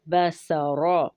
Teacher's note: اب یہاں دیکھیں کہ با باریک پڑھا جاتا ہے، سین میں سیٹی ہے، اور را کو پر پڑھیں گے کیونکہ اس کے اوپر فتحہ ہے